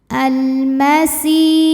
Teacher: Karena alif lam menghadapi huruf qamariah yaitu mim, maka lam dibaca jelas. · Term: alif lam qamariah